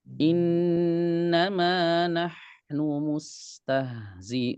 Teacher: Huruf H, huruf Sin, huruf H ini semuanya huruf rokhawah. Ya, jadi kita sukun dialirkan.